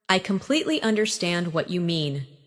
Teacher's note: Emphasize completely and understand.